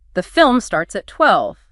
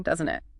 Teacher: If you're genuinely checking information you're not sure about, the main part of the sentence falls, but the tag itself rises. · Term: rising tag